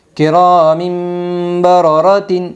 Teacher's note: اقلاب ہوگا، دو زیر تنوین کے بعد با آئی ہے اس لیے دو زیر تنوین کو میم سے بدل کر غنہ اور اخفاء کے ساتھ پڑھے گی